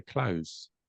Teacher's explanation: I would say that most native speakers if you listen closely they say close with an S